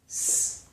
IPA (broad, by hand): s